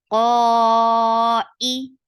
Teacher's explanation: Qa e, for kasra give e sound. Qa should be separate from e and shouldn't merge in.